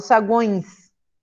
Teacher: Esse E tem som de I, então ele aparece como semivogal. · Então é um tritongo nasal, porque esse tio faz o meu nariz vibrar.